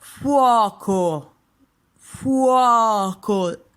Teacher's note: the O is open